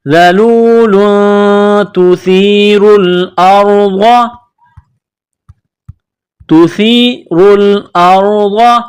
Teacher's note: ذال، لام واو پیش لو، ذلو، لام دو پیش لون، لام کے اوپر دو پیش تنوین ہے، تنوین کے بعد تا ہے، حروف اخفا ہے تو آواز ناک میں چھپانی ہے، غنہ کرنا ہے